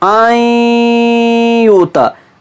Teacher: जो नून साकिन की आवाज़ है वो हमारी नाक में चली जाती है, पूरी की पूरी गायब नहीं होती है